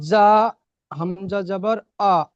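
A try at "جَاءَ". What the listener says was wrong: যা, বেশি করে টান দিয়ে পড়তে হবে, বানান করবার সময় টান দেবেন।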